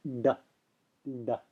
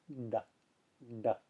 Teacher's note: one is it's like the English letter du except that the the tongue is curled back tip of the tongue is touching the roof of the mouth